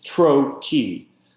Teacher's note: more stress on tro than key, right? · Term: trochaic